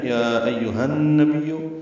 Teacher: حمزہ اقصی حلق سے، ہا وسط حلق سے ادا کریں گے، ہا پہ ہمس ہوگا